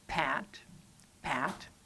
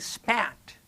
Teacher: you will feel the burst of air that you get from stopping the airflow and then starting that p sound, pat. If you pay attention, there's actually a difference in the sound.